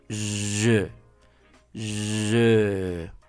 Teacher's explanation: La letra E, para poder pronunciarla, pues es la misma posición congelada de tus labios en círculo, como si fueras a pronunciar o fueras a pronunciar U. Pero pronuncias la E